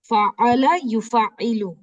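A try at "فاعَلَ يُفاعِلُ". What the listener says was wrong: अच्छा, इसमें शद नहीं है, आपकी आवाज में ना शद जैसे साउंड एक फील हो रहा है।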